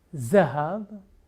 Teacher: the d becomes zed in hebrew